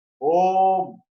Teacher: Then we say the same pranava syllable Om in 2 seconds. Then it becomes a long vowel, and it's called Dirghaha in Sanskrit.